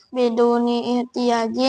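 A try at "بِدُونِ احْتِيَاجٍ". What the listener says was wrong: Nah, jangan biduni ihtiyajin. Itu hamzahnya hamzah wasol. Biduni ihtiyajin.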